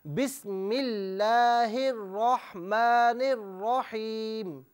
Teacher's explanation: بسم اللہ میں جو لفظ اللہ کی لام ہے اسے باریک پڑھیں، پر نہ پڑھیں